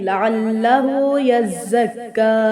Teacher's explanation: یزکا نہیں ہوگا، یزکا، زا کے اوپر بھی شد ہے، یزکا، زا کو سیٹی کے ساتھ ادا کریں گے